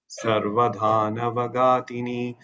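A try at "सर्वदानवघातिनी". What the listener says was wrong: No. Da is alpa prana, gha is a mahaprana. Okay. Sarvadanava and not dhanava.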